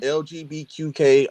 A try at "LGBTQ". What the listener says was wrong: Okay, there's no K, but yeah, I get what you're